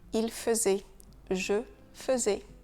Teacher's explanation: Le premier AI de faisait se prononce E.